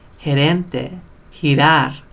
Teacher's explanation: it's weak when there's an E or an I, just like the C. And it makes the English H sound.